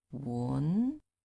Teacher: And second is going up. 文, from the bottom to the top.